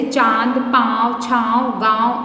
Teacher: इसके उच्चारण में नाक और मुंह दोनों का प्रयोग किया जाता है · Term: अनुनासिक